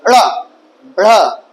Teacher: जब ड़ा बोलते हो तो जीभ जल्दी से जाके तुरंत वापस आ जाती है, ड़ा ड़ा ऐसे होता है, तो ये उच्छिप्त व्यंजन कहलाते हैं।